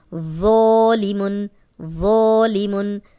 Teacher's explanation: خالی الف، پیچھے ذو پہ زبر، تو اس کو ہم 2 حرکات لمبا کریں گے، موٹا بھی پڑھیں گے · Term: الف مدہ